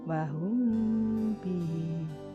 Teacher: Contoh wahum bihi. Jadi mem mati bertemu ba dibaca samar-samar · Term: ikhfa safawi